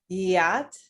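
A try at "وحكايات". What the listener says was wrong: You don't have to make a stop in the middle. Wahkiyat. wahkiyat.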